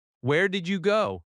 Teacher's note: Stress did and go slightly. The small words are softer.